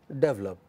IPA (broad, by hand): 'devləp